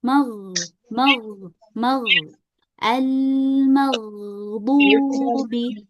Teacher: huruf gain itu dia punya sifat rakhaah ya, punya sifat rakha atau mengalir.